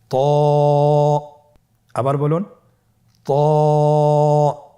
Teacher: ত এর মাখরাজ কোন জায়গা থেকে আপনারা স্ক্রিনে দেখতে পাচ্ছেন। জিহ্বার আগা, সামনের উপরের 2 দাঁতের গোড়ার সঙ্গে লাগিয়ে উচ্চারিত হয়।